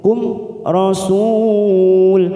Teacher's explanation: Kum mim sukun bertemu ro idhar safawi, kita baca jelas tanpa mendengung.